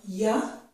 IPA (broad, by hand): j